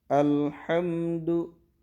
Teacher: Sementara lam dan mim sukun itu tidak boleh dibaca mantul, karena lam dan mim itu bukan huruf qalqalah. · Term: lam sukun dan mim sukun